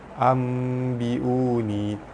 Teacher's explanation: Ambiuni, nun mati bertemu dengan ba, hukum dia iklab, cara baca dia bunyi nun mati berubah menjadi bunyi mim